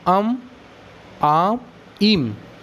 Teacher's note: यह मुंह और नाक दोनों से बोल रहा है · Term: अनुनासिक